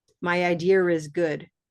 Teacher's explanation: Commonwealth speakers will link idea with is using an R. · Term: linking sound